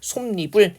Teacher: 자음으로 끝나는 말 뒤에 뭡니까이 야여요 유로 시작하는 말이 결합할 때 뒷말이 첫소리 에 니은이 덧붙는 현상을 이야기를 하는 겁니다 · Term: 니은 첨가